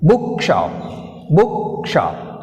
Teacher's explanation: We have a stress on first syllable.